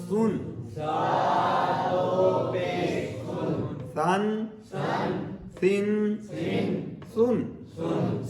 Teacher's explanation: سیٹی آئی ہے, باریک پڑھا ہے میں نے